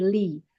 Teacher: Li, jangan miring ke e ya, bukan le, tapi li. لي لي لي Nah, kemudian ada ila, di situ ada hamzah yang harokatnya ahwan, ada hamzah yang harokatnya kasrah ya, diikuti dengan ya sukun, maka dibaca mat tabi'i 2 harokat.